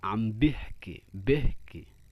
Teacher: Di Jordania tadi yang Syam itu perubahannya seperti e dan i, jadi enggak e dan enggak i. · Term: imalah